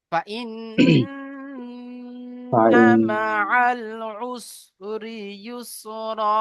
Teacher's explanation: নুনের উপরে তাসদিদ থাকলে নুন মুসাদ্দাদ গুন্না ওয়াজিব আগের অক্ষরের সাথে মিলিয়ে পড়ার সময় এক আলিফ পরিমাণ গুন্না করে পড়তে হয়